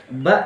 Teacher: Ba kan alat ucapnya kan bibir atas dengan bibir bawah. Nah ini bisa timbul harokat, ba ini berharokat ini kalau dua alat ucap ini berjauhan.